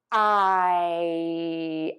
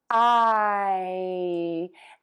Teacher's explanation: This vowel is going to be tense, and you are going to start with an open mouth, I, and move to a smile. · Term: long I